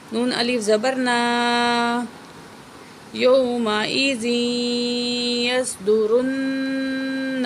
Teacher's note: نون کے اوپر تشدید ہے، غنہ بھی کریں گے